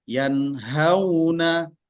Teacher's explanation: Berarti ada dengungnya. Macam mana pula dengungnya? Dengungnya level 1, paling rendah.